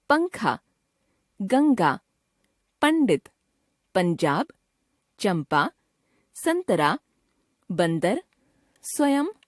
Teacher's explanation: अनुस्वार एक नासिक्य व्यंजन है इसे बिंदु से लिखा जाता है इसके उच्चारण में भी वायु मुंह और नाक से बाहर निकलती है